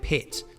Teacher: when kiwis speak it's pronounced like the higher e vowel and sounds like pits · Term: rising front vowels